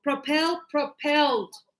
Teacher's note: the stress is on the last sound